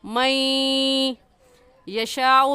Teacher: نون ساکن کے بعد حروف یرملون میں سے یا آ گیا ہے، تو غنہ کرنے کے ساتھ ساتھ ادغام بھی کریں گے